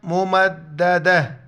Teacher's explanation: آخر میں گول تا آخر میں ہا میں تبدیل ہوتا ہے وقف کی حالت میں